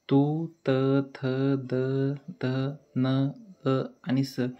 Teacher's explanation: जेव्हा तुम्ही हे वर्ण उच्चारता तेव्हा तुमच्या लक्षात येईल की तुमची जीभ ही दातांना टच होते म्हणजेच ते दंत्य वर्ण आहेत पुढचा भाग आहे औष्ठ्य वर्ण खालच्या · जे वर्ण उच्चारताना आपल्या जिभेचे टोक वरच्या दातांच्या मागच्या बाजूला टेकते त्यांना दंत्यवर्ण असे म्हणतात.